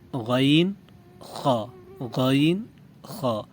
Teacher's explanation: سب سے اوپر والا حصہ جو زبان کی جڑ کے ساتھ ہے یہ ہے ادنا حلق۔ گلے کے اوپر والے حصے سے 2 حروف ادا ہوتے ہیں: غین، خا، غین، خا۔